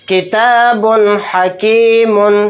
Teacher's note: تو بعد و پیش بن کہتے ہوئے جو بن میں لاسٹ میں نون کی آواز آ رہی ہے اس کو ظاہر کر کے بلا غنہ کے اس طرح سے جلد پڑھیں گے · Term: اظہار